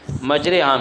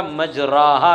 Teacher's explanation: فتحہ پر کسرہ غالب آنے کا مطلب یہ ہے کہ کسرہ کی آواز زیادہ ہو اور فتحہ کی آواز کم ہو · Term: امالہ کبریٰ